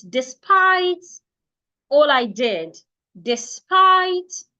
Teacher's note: Just like the word estate, you're stressing the second syllable. De, not de.